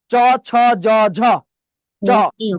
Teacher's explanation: জিবটা উপরে তালুর সাথে লাগাইয়ে উচ্চারণ করতে হবে। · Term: তালব্য ধ্বনি